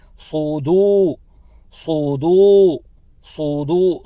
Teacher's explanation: دال کو کھینچنا ہے کیونکہ دال کے بعد واو ساکنہ حرف مدہ میں سے ہے، تو دو حرکت کی مقدار اس کو کھینچیں گے۔ ہم پڑھیں گے صودو صودو صودو، صودو نہیں پڑھنا، صاد کو نہیں کھینچنا بلکہ دال کو کھینچنا ہے، صودو پڑھنا ہے، صودو نہیں پڑھنا ہے۔